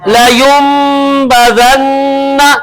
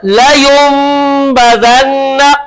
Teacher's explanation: نون ساکن ہے، نون ساکن کے بعد آ گیا با، تو اب نون ساکن کو کس سے بدل دیا؟ میم سے